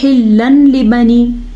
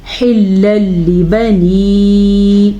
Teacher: حلل حا کے مخرج کا دھیان رکھیے گا، اور نون ساکن یا نون تنوین کے بعد لام یا را آنے کی صورت میں دونوں کو آپس میں ملا دیتے ہیں، بغیر غننے کے ملاتے ہیں. اسی کو کہتے ہیں ادغام بلا غنہ.